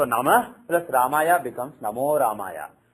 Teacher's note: after Visarga, if Ra comes, Visarga becomes O. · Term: Visarga Sandhi